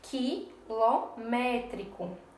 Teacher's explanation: Vejam também que a sílaba tônica, ela está na antepenúltima, certo? A sílaba mais forte é essa daqui, que tem um acento agudo, quilométrico. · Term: proparoxítona